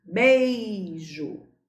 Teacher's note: Temos uma vogal mais uma semivogal. Decrescente. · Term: ditongo decrescente